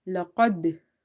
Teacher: and strong qalqala is there laqad when properly your movement is there in the makhraj, in the exit point, and you can feel that there is a echo in the sound or reflection, like a voice is striking somewhere and reflecting back